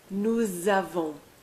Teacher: between the S and the A, we will pronounce a little Z sound. That's called a liaison.